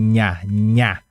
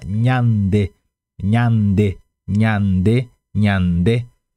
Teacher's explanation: segure a língua e a língua assim ó no céu da boca espalhada no céu da boca NH NH aí você solta e fala nhande NH NH nhande